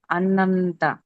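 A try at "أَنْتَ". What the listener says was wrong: అంతా అని కొంచెం దీర్ఘం తీశారు కదా, అలా తీయకూడదు.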